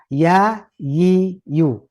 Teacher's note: ya Yi Yu letaknya apa di tengah lidah bagian tengah lidah